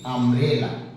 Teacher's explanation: ইউ এর উচ্চারণ হলে ইউ এর মতো হচ্ছে না, আ হয়ে যাচ্ছে, আ, ইউ এর উচ্চারণ আ হয়ে যাচ্ছে, আমব্রেলা।